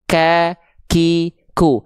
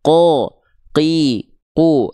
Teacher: cara melafalkannya dia dari pangkal lidah menyentuh ke langit-langit yang paling dalam alias langit-langit yang lunak. Dia tidak mengalirkan nafas. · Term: huruf qaf